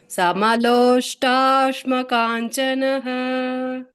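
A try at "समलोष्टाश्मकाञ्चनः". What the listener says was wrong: ಸಮಲೋಷ್ಟ್ರಾಶ್ಮ, ಸ್ಟ್ರಾ ಬರುತ್ತೆ ಮಾತಾಜಿ. ಹಾಗೆ ಟಾವತ್ತು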